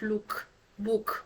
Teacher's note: this is a close rounded vowel sound it's again closed and rounded